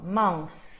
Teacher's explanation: É só esse sopro, ó. Mouth. Minhas cordas vocais descansam nesse momento. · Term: TH voiceless